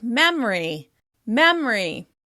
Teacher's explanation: "Family" is often pronounced "famly, famly." "Memory" drops that schwa sound in the middle